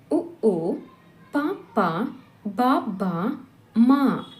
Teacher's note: ಅಕ್ಷರಗಳು ತುಟಿಯ ಓಷ್ಟದ ಸಹಾಯದಿಂದ ಹುಟ್ಟುತ್ತವಾದ್ದರಿಂದ ಇವನ್ನು ಓಷ್ಟಿಯ ವರ್ಣಗಳೆನ್ನುವರು